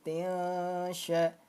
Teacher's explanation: Tiasya dibaca samar dengung, ditahan 2 harokat. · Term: Ikhfa hakiki